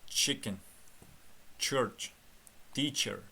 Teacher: demak t bilan shni urushtirib aytarekanmiz